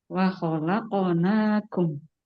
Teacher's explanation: yaitu di qalqalah yang qof. Wahalaqonakum memantulnya itu ke huruf O.